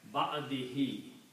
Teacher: Now that one dhamma has become kasra now, so it become ba'adi. And to pronounce easily, we also pronounce this hu as he. So this become ba'adihi.